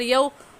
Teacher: قاف پیش قو، لام واو پیش لو، قلو، با یا دو پیش بوئی، قلوبوئی، یا واو زبر یو، اب یہاں ہم یا واو زبر یو کو دیکھیں، یتکلمون میں ہم نے منہ کو کھینچا تھا کیونکہ واو ساکن سے پہلے پیش آ گیا تھا تو وہ واو مدہ بن گیا تھا، اور یومئذ میں واو ساکن سے پہلے زبر آ گیا تو یہ واو لین ہے، اور لین کو کھینچ کر نہیں پڑھتے